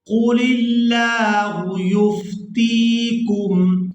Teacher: تا کو یا مدہ کے ساتھ ملاتے ہوئے کھینچ کر ادا کریں گے